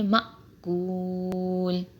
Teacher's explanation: حمزہ ساکن کو جھٹکے سے پڑھیں گے